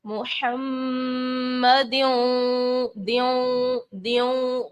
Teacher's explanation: गुन्ना कर रहे हैं, नाक में आवाज लेके जा रहे हैं